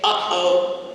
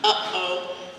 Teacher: that stop that happens in the middle of your throat, uh-oh, you can kind of feel your, not Adam's apple, Eve's apple, you can kind of feel your throat bob up and down, uh-oh, that's a glottal stop.